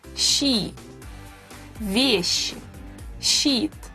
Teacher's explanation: Sh is rather hard to pronounce. It is a long and soft sh.